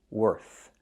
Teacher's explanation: When I say worth, I have the TH. I put my tongue out. I make the air sound, no voice.